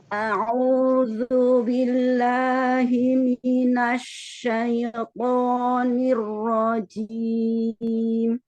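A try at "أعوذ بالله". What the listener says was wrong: Ketika dhammah, monyongkan bibirnya. A'udzu billahi. Asyaito, huruf lin, harfu lin tidak masuk ke hidung. Asyaito. Tutup hidungnya. Makanya suaranya sengau gini. Syaito. Harusnya syaito. silakan tutup hidungnya, Ibu. Nanti syai diulang-ulang terus, tutup hidungnya.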